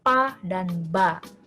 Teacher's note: Bunyi plosif atau bunyi letupan seperti Huruf Pa dan ba Ya seperti ada letupan